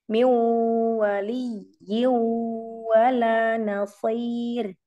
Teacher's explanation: ya-nya karena bertasydid kita nabar dulu, baru masuk ke gunnah depannya.